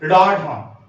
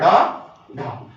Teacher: उच्छित यानी कि जब जिह्वा का जो किनोर है उसका जो पिछला भाग है वो तालू को स्पर्श करने के बाद इतनी तेजी के साथ नीचे गिरे कि हम उसे रोके से नहीं रोक पाते हैं